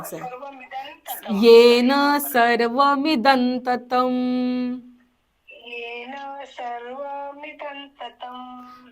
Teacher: पुढे त असल्यामुळे दच्या वरचा अनुस्वार न करतोय आपण. · मिदन बोलायचं, मिदम नाही, न उच्चार करायचा.